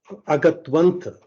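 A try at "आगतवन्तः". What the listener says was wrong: Agatavantah. Okay, now Mahodaya is having the same problem that Hindi learning brings to us through Devanagari Lipi. See, Hindi में जो क्या होता है, ये तकार का हलंत नहीं होने से भी आगत वंत like that we read, because that's very natural in Hindi.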